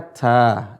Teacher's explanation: Menggantinya tanwin itu tidak berbunyi tan, jadi dibaca ta, diganti dengan alif.